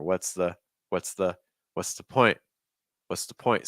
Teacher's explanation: notice that linking between that S and that TH. It's not what's the, it's more what's the point?